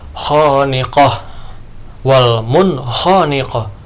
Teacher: huruf ha Terus yang berikutnya Wal Mun khoniqoh Wal munkoniqoh ini nun mati bertemu dengan huruf Izhar yaitu huruf ko gitu jadi jelas ya dibacanya